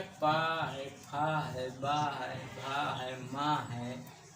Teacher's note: ओष्ठ से बोले जाते हैं। ओठ, इसमें ओठ का प्रयोग होता है, ठीक है।